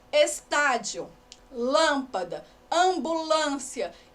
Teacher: a antepenúltima sílaba é a tônica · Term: proparoxítona